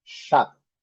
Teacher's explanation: Essa letra, então, representa o SH. E a letra O, com o som de A aqui um pouquinho longo, e o P, shop.